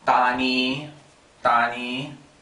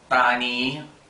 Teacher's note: ni is a long flat tone.